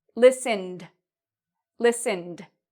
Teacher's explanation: If I wanted to turn listen into a past tense verb, I pronounce the ed like a d.